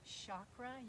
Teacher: chakra which i love to say with a soft sh sound